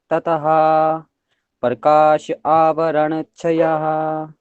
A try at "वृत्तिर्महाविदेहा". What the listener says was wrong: बहुत अच्छा बोला, लेकिन यहाँ पे ना केवल वृत्ति नहीं बोलना है, वृत्तिर ये वाला रा जो है ना यहाँ पे लेके आ जाना है इसका प्रोनाउंसिएशन। तो क्या हो जाएगा, वृत्तिर वृत्तिर महाविदेहा ततः। इसका प्रोनाउंसिएशन ना रा होता है। आधा रा और वृत्तिर वृत्तिर ऐसे बोलेंगे इसे, ठीक है